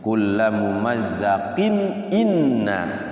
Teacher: Izhar halqi karena hamzah itu keluarnya dari makhraj halaq di bawah tenggorokan di sini paling bawah.